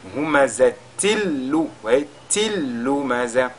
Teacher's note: nous avons le tanwin qui est dans le mot humazatin. Lui également, il est suivi de notre lam. Il va fusionner dans ce lam. C'est-à-dire que dans ce verset, nous avons deux cas de idgham bi ghayri ghunna. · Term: idgham bila ghunna